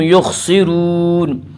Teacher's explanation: خا کو پر پڑھیں گے۔ خا حروف مستعلیہ میں سے ہے، حروف مستعلیہ 7 ہیں جن کا مجموعہ خصہ ضغط قز ہے، جو ہمیشہ ہر حال میں پر پڑے جاتے ہیں۔